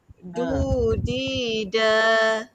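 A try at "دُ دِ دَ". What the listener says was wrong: Kalau boleh yang nipis tu nipis sekali. Du, di, da. Jangan du, di, da. Jangan ada penekanan kuat sangat.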